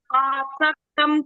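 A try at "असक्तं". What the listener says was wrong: ಅಲ್ಲಿ ಅಸಕ್ತಂ, ಅಲ್ಲಿ last line ಅಲ್ಲಿ ಅಸಕ್ತಂ ಆಗ್ತದೆ, ಆಸಕ್ತಂ ಅಲ್ಲ, ಅಸಕ್ತಂ.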